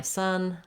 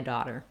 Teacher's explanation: If you notice that you might have had a different kind of pronunciation there, it doesn't have any rounding. We don't want son, no rounding, versus daughter does have that rounding. So the spelling can sometimes be misleading, even on simple words like son and daughter.